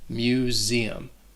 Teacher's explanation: That S is also going to sound like a Z.